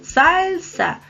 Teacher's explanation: se divide en dos sílabas y la sílaba tónica es sal